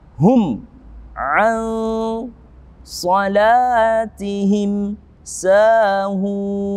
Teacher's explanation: Di situ ada ikhfa syafawi. Mimnya mengatup bibir kita dengan sempurna.